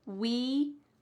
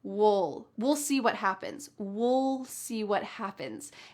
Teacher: when we're speaking relatively fast in American English, we often reduce this and it just sounds like wool. You're almost swallowing that final sound.